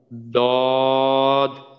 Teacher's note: মাখরাজ জিহ্বার গোড়ার কিনারা উপরের মাটির দাঁতের গোড়ার সাথে লাগাইয়া উচ্চারিত হয় দদ।